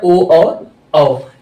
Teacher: कंठ और ओट दोनों से मिलके आता है ओ और औ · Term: ओष्ठ स्वर, संयुक्त स्वर